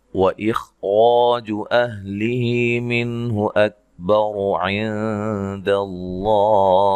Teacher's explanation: خا کو موٹا ادا کریں گے اور را کو موٹا ادا کریں گے